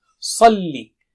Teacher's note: Sa is very thick and high.